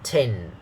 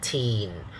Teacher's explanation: notice it's a short a sound not the long e sound okay not e but a the short one so we say